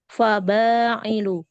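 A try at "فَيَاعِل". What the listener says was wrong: Faya, bukan fa. Faya, titiknya 2.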